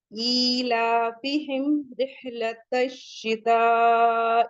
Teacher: مد متصل آ رہا ہے تو اسے 4 to 5 کاؤنٹ پڑھیں گے کیونکہ حمزہ اسی کلمے میں ہے. اور ایک پہچان آپ کو مد متصل کی یہ بھی بتائی گئی تھی کہ حمزہ جب اسی کلمے میں ہوگا تو حمزہ اپنی اصلی شکل میں ہوتا ہے اور جب مد منفصل ہوتا ہے حمزہ دوسرے کلمے میں ہوتا ہے تو وہ حمزہ الف کی شکل میں ہوتا ہے.